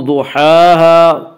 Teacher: अलिफ मद्दा, अलिफ हमेशा मद्दा होता है और अलिफ से पहले ज़बर होता है। अलिफ मद्दा को एक अलिफ के बराबर खींच कर पढ़ेंगे।